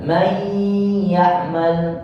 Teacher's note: 50% sifat yang pertama yaitu gunnah masih terdengar, dan 50%-nya sudah masuk ke dalam sifat huruf yang kedua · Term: idgham naqis